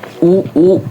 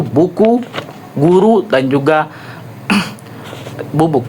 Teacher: Cara artikulasinya yaitu pada bagian belakang lidah dinaikkan tinggi mendekati velum. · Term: vokal U